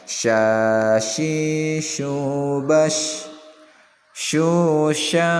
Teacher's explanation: Makhrajnya di tengah-tengah lisan dan tengah-tengah langit-langit bagian atas. Sya shi syanya panjang, sya shi shu ini masing-masing panjang ya, 2 harakat.